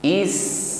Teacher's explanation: Sin sukun Hames sifatnya ya nampakan ada nafas yang mengalir terus dilanjutkan dengan sifat berikutnya rakhawa is bunyi Sin di situ memanjang